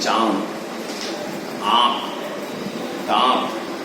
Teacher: इसका उच्चारण मुंह से और नाक दोनों से होता है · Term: अनुनासिक